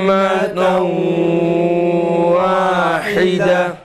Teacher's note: İdgam ma'al gunne olduğu için biz burada gunneli bir idgam icra ediyoruz. Dolayısıyla gunneli okumamız gerek.